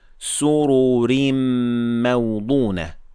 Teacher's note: The first one is heavy because it has dhamma, and the second one directly afterward is light because it has tanween kasra.